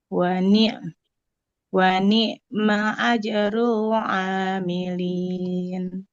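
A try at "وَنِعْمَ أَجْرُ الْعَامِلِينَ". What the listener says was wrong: Wa ni'mah. Ainnya lebih mengalir. Wa ni'ma ajrul amilin.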